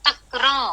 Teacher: आप तक्र बोलते हैं और तक्र के इमीडिएटली बाद आप उसको अनुनासिक बनाते हैं, तक्र। इतना मतलब इतना माइन्यूट गैप होता है, इतना माइन्यूट ट्रांजिशन होता है कि it might be mistaken for this thing, मतलब ऑलमोस्ट इसके जैसा उच्चार होता है, almost like this but slightly different.